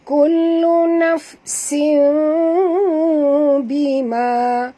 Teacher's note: Maka kita kena baca, menyembunyikan bunyi tanwin menjadi huruf mim, menjadi bunyi mim, minta maaf. Bunyi mim jadi tutup mulut ya, dan dengung. Ini namanya hukumnya ialah iqlab ya.